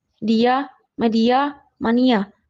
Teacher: Gabungan dua vokal yang bukan diftong karena masing-masing vokal berada dalam suku kata yang berbeda atau tidak melebur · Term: bukan vokal rangkap